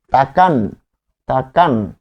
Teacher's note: যখন আন বলছেন থেমে যাচ্ছেন তখন বুঝে নিতে হবে এর নিচে হসন্ত আছে। তাহলে আন প্রত্যয় এই শব্দের মধ্যে রয়েছে এবং এটি যখন উচ্চারণ করবে করব তখন হবে তাকানো।